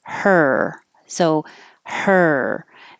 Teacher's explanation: start with the vowel that it is which is really just the sound of the r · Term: ER sound